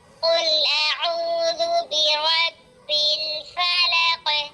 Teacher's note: قاف حروف مستعلیہ پورا اور موٹا بھی پڑھا جائے گا اور یہاں پر قلقلہ کبرا بھی ہوگا